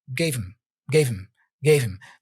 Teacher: The H for him is dropped. He only pronounces M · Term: connected speech